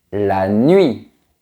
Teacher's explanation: c'est un peu comme le son u mais qui est prononcé très vite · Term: troisème semi-voyelle